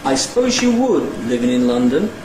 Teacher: The next little section I split into two word groups, so with two nuclei, and the first word group had a low pre-head, a high head, and a high fall nucleus on wood, and the second word group had a low head and a low rise nucleus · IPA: aɪ ˈspəʊz jə ˋwʊd ∣ ˌlɪvɪŋ ɪn ˏlʌndən